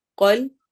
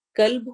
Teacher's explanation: قاف کو موٹا پڑھنا ہے، باریک نہیں پڑھنا. باریک پڑھیں گے تو اس کا مطلب ہوگا کتا، ڈاگ. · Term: موٹے قاف